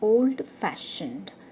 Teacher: fashion is the second part of the word and it is stressed